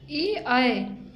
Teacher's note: इनका स्थान कंठ तालु यानी कंठ और तालु से हम उच्चारण करते हैं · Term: कंठ तालव्य